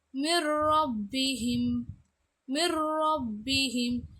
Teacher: சுக்கூன் செய்யப்பட்ட நூனுக்கு அடுத்து ரா வந்திருக்கும் பொழுது அதை என்ன செய்யணும் அப்படின்னா ஷத்து செய்யணும். மிர்ரப்பிஹிம், மிர்ரப்பிஹிம் இப்படி ஷத்து செய்யணும்.